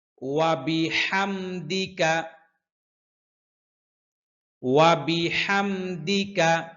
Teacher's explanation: বললে এখানে কিন্তু ওয়া এর উপর একটা জবর আছে হ্যাঁ তো ওয়া বলতে গেলে ঠোঁট দুইটা ঠোঁট গোল হবে দুইটা ঠোঁট গোল হবে রুই মাছের ঠোঁট যেরকম গোল ওয়াও বলতে গেলে ঠোঁটটা এরকম গোল